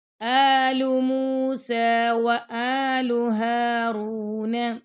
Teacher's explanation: ہا پہ ہم نے ہمس کرنا ہے